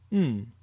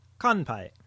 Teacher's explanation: But there is one more sound in Japanese that is worth mentioning now, and that is the nasal sound. It is not an N sound, but rather a mix between an N and an M. Here's what it sounds like: And in context, here is the word for cheers in Japanese, which uses the nasal sound: kanpai.